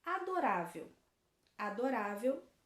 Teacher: uma palavra paroxítona a letra de a palavra é adorável adorável também é a penúltima sílaba mais forte então ela também é uma palavra paroxítona